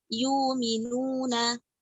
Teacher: menggantikan hamzah dengan huruf waw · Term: ibdalul hamzati waw